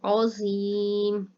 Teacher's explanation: عظیم، عین جو ہے اس کو حلق سے زو کو موٹا کیا جائے گا اور یہاں پر یا مدہ ہو رہا ہے، اس لیے لمبا کریں گے، اور میم کے اوپر ساکن ہو رہا ہے، مد عارض ہو رہا ہے، ٹھیک ہے، تو اس وجہ سے یہ لفظ تھوڑا سا لمبا کر کے پڑھا جائے گا۔